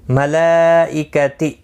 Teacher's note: یہاں پر مد متصل ہے, 4 الف کی مقدار کے برابر کھینچ کر پڑھیں گے